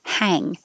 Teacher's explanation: for 33 hang my jaw is open the back of the tongue is high